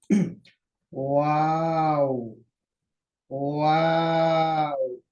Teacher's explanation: से जल्दबाजी नहीं आराम से और आहिस्ता से हम गोल करेंगे दोनों होठों को पहले क्या करेंगे गोल करेंगे ओ फिर फ्लैट करेंगे थोड़ा सा नॉर्मल हालत में लेके आ जाएंगे फिर गोल करेंगे